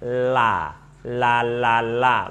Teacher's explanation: di pinggir lidah bagian ujung dengan langit-langit